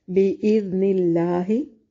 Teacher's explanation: بِإِذْنِ اللَّهِ، با الف مدہ ہے، دال کو نرم پڑھیں گے، نون کو باریک اور لفظ اللہ کو باریک پڑھیں گے کیونکہ لفظ اللہ سے پہلے کسرہ ہے، اور جب لفظ اللہ کے لام سے پہلے کسرہ ہو تو لفظ اللہ کا لام باریک پڑھا جاتا ہے۔